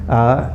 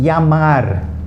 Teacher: Double L's in Spanish don't have an L sound. Remember that always. Okay, they have a ye sound.